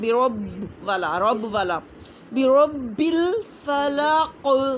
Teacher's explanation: پڑھنا، بی پڑھنا ہے، باز بی، را کو موٹا پڑھنا ہے، با پہ پھر سختی کرنی ہے کیونکہ با مشدد آ گیا ہے نا